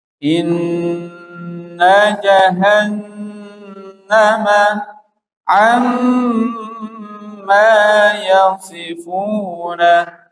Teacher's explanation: Selanjutnya nun tasdid dan mim tasdid dibaca dengung. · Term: Gunnah musyad